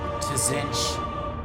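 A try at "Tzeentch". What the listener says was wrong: you don't pronounce the T though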